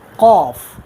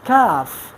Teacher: when we pronounce a letter, we pronounce with full mouth like qaf, and that is called isti'ala.